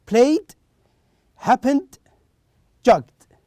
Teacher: If the root verb ends with voiced sound, in this case we pronounce the ed as da sound.